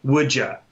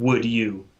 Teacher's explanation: not all the time but a lot of the time the D sort of changes to a J like would JA right instead of would you but you can